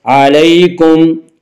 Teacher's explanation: فتاب علیکم، یالین، یالین وہ یا جو ساکن ہو اور اس سے پہلے زبر ہو، یالین کو نرم آواز کے ساتھ جلدی پڑھیں گی